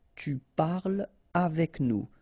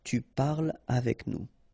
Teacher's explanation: So no liaison here between parle and avec